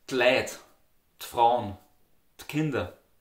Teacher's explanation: you can also just say the D sound, which almost sounds like a T sound